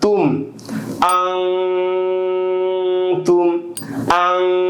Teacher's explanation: মিম সাকিনের বামে বা মিম ব্যতীত ইজহারের 26 হরফে যে কোনো হরফ আসিলে মিম সাকিনকে স্পষ্ট করিয়া পড়িতে হয়, এখানে মিম সাকিন গুন্না হবে না। তুম, আং তুম, আং এটা ইকফা গুন্না হয়েছে, আর এটা তুম এটা ইজহার হয়েছে।